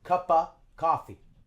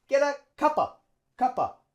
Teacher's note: And of turns to schwa, and we link it with cup.